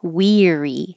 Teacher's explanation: Weary, you use the E. Tongue's very high.